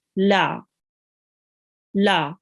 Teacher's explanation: Now here is lam with the fatha. We will prolong it for 1 count